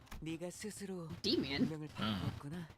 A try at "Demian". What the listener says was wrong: Damien. Yeah, the E is pronounced as an A.